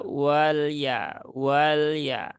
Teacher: huruf lam itu sifatnya dia bukan syidah tetapi sifatnya dia tawasut